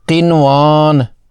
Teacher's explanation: اظہار مطلق، نون ساکن کے بعد اگر حرف یرملون ایک ہی کلمہ میں ہوں تو وہاں ادغام نہیں ہوگا، غنہ نہیں کریں گے بلکہ اظہار کرتے ہوئے نون کو بالکل ظاہر کر کے ادا کریں گے